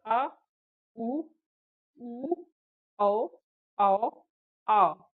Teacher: जीवा के पश्च भाग से उच्चारित होने के कारण उन्हें पश्च स्वर कहते हैं